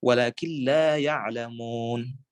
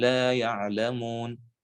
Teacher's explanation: Sudah tidak ada bekas huruf nun baik makhraj maupun sifat. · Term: idgham bi ghairi gunnah